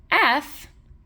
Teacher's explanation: F, a voiceless sound. All we hear there, since there's no voicing at the level of the folds, is aperiodic noise.